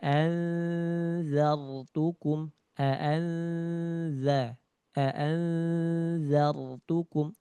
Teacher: tsa dengan dzal sama ujung lidah dengan ujung gigi dari atas disentuhkan